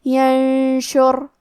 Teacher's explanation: شین حروف الاخفاء میں سے ہے، اور اخفاء کا معنی ہے چھپا دینا، تو ہم نون ساکن کو چھپاتے ہوئے اور غنہ کے ساتھ یہ حکم کو ادا کریں گے